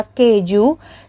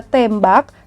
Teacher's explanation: Sedangkan pada kata tembak, sebagai contoh dari suku kata tertutup, alofon E pada silabel tem direalisasikan dengan cara 3 terbalik karena setelah fonem E diikuti dengan koda